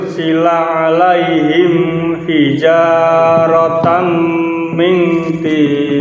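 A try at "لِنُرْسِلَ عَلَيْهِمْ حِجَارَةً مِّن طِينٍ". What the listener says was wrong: mim alaihimnya jangan dikasih dengung. Alaihim hijaratam.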